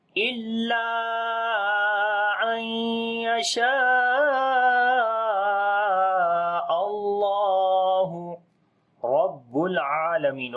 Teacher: اللہ کے نام سے پہلے زبر آ گئی ہے حمزہ کے اوپر تو اللہ کا نام موٹا پڑھیں گے، لمبا بھی کریں گے، کھڑی زبر ہے اس کے اوپر.